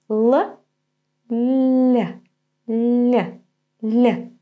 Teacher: back of the tongue the very root of the tongue lowered so the front and middle part goes up the root is lowered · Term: soft L